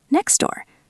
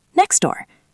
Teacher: Next door. The T is gone. The S flows directly into the D.